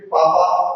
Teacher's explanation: अगर आपको पापा कहना है, पा प्रवर्धन जो ओष्ठ का है, तो बिना दोनों ओष्ठ के लिए आप पापा नहीं बोल पाइएगा · फल बोलना है तो बिना आपका ओठ मिले आप नहीं बोल पाएंगे